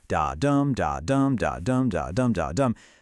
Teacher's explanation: Now, Shakespeare wrote mostly in Iambic Pentameter. That's 5 iambs per line, 10 syllables total.